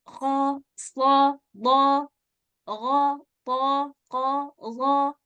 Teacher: seperti o walaupun Sebenarnya bukan o dalam bahasa arabak ada Oh itu karena hurufnya tadi yang berat maka mengucapnya tebal sehingga terdengar seperti o koho SH Dho gho th qo Do enggak perlu Oh enggak